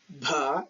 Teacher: So aspiration is that so releasing of a puff of air, that is we notice that when we pronounce these aspirated sounds, we notice a puff of air or aspiration. So air is released immediately after the sound, that is called aspirated sound. · So Proto-Indo-European voiced aspirated sounds like bha, this is aspirated.